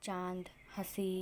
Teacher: इसके उच्चारण में हवा नाक और मुंह दोनों से बाहर निकलती है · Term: अनुनासिक